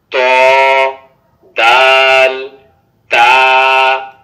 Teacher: জিহ্বার আগা সামনের উপরের 2 দাঁতের গোড়ার সঙ্গে লাগাইয়া ত দাল তা